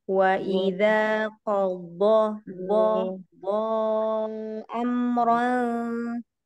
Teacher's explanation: huruf dho tadi kurang itbak ya, kurang lengket. Kemudian pangkal lidahnya lebih dinaikkan lagi. · Fathah tanwin bertemu dengan fa. Nah, dibaca samar.